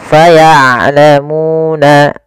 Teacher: Syiddah itu dia tertahannya suara, rokhawah mengalir suara. Maka ain jangan terlalu dialirkan suaranya tapi tidak juga ditahan. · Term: sifat bainiyah